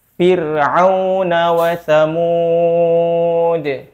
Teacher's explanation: pada kalimat fir itu adalah contoh dari huruf ra ketika tipis